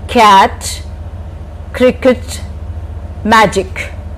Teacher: K. In this, the back of your tongue touches the back of the roof of your mouth. That is the soft palate.